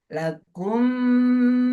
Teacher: Dua misal, mimnya sama. Lakumma ditahan, dimasukkan, didengungkan. Lakumma 1, 2, 3. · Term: idgham mimi